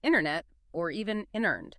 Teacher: a T sound is often completely cut out or maybe replaced with a quick flap T D sound in fast American speech, especially after an N. That middle T between the N and E is frequently skipped entirely.